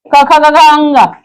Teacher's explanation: उच्चारण गले से, यानी कि कंठ से होता है। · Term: क वर्ग